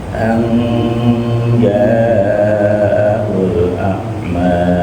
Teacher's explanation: Untuk ikhfa'nya an agak diberikan haknya berupa gunnah. An agak lamain dikit.